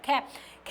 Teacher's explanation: ख जो है ये हमारा क्या है? ये हमारा क्या है? अघोष महाप्राण है।